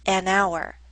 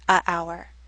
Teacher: starts with the letter H but we don't pronounce the letter H